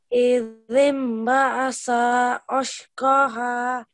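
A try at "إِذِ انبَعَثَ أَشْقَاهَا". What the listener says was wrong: But again, you're still making the s sound here. It needs to be a th sound. Make sure you elongate this qa for 2 seconds.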